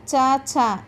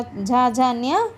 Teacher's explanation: चा, छा अघोष है, उसके बाद जो आने वाला झा, झा, न्या सघोष है